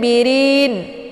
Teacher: rin dibaca panjang karena ini merupakan mad arid li sukun, yaitu tandanya ada mad tabi'i yaitu ada ya sebelumnya harokat kisrah.